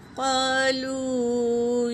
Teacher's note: الف مدہ ہے دونوں بھی، تو دونوں کو برابر ایک الف کے برابر کھینچیں گے